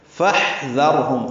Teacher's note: ہا ساکن پہ ہم سے سانس جاری رہے گی. دال نرمی سے پڑھیں گے.